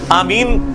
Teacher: تو اس کے بعد آپ نے آمین کہنا ہے، اور آمین میں بھی جو حمزہ ہے یعنی الف اس کو تھوڑا لمبا کرنا ہے، اور آپ اگلا حصہ بھی آپ کر سکتے ہیں لمبا